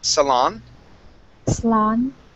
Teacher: stress at the end of the word